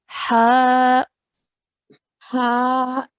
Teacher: ha with a vertical fatha. So we're pronouncing it for 2 counts